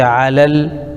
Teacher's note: لام پر زبر لیکن آگے لام ساکن ہے تو ایک لام کو دوسرے لام میں ملائیں گے